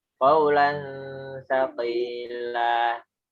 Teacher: Nah, untuk ikhfa'nya langsung pindah ke ta ya.